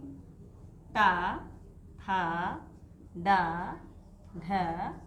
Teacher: अब क्योंकि टा वर्ग में है, टा वर्ग में हमारी जिह्वा मूर्धा को, मूर्धा, देखिए मूर्धा को स्पर्श करती है, इसीलिए वे मूर्धन्य वर्ण कहलाते हैं।